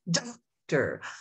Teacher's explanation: On that first syllable, my mouth opened wider. I emphasized it. I accented it.